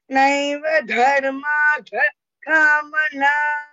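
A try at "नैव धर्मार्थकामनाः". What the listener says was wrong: Visarga is also there. Yeah, you have to pronounce that also.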